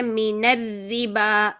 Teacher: تو اگر ہم نے کسرہ والا را کو باریک کرنا ہے تو ہم پہلا والا را جو ساکن ہوگا اس کو بھی باریک ہی رکھیں گے، شد والی دونوں را باریک ہوں گی، ٹھیک ہے۔ تو ہم نے دونوں را کو باریک رکھنا ہے، من الربا، ٹھیک ہے، من الربا، یوں بولیں گے، ٹھیک۔